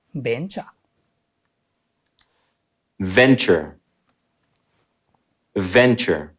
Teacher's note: Stress falls on the first syllable.